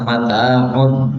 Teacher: mim makhrajnya pada bibir, ta makhrajnya pada lidah